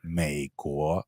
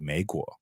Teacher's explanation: you have to start low and then go up